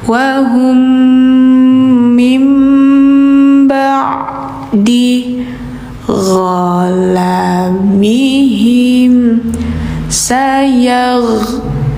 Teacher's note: Mim sukun dan ke depannya ada mim tasdid, maka bacanya didengungkan.